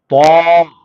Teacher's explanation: اسی تا کو موٹا کرنا ہے آپ کو. جب آپ اس کو موٹا کرو گے تو وہ تو ہو جائے گا